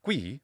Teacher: or which this is the labial velar sound it's not gui it's not two vowels in succession it's one consonant plus one vowel the voiceless labiovelar occlusive